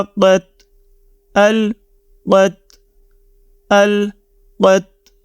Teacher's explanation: قاف heavy letters میں سے ہے تو اس کو آپ نے موٹی آواز میں ہی پڑھنا ہے۔ حمزہ زبر لام ال، قاف زبر تا قت، ال قت، ال قت۔